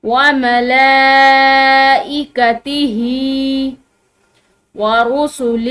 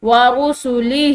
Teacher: ورسلہ، یہ ہا جو ہے یہ موٹی ہا ہے، ٹھیک ہے، یہ گول ہا جو ہوتی ہے موٹی، یعنی کہ سینے سے ادا ہونے والی ہا ہے